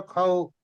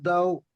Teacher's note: ও, ও বলে টেনে নিয়ে গিয়ে শেষে মুখটা একটু মুড়ে নিবেন, তাহলে ও উচ্চারণ হয়ে যাবে